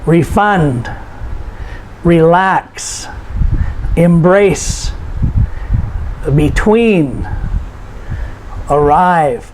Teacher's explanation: these are two syllables verbs and we notice the stress is put on the second on the last syllable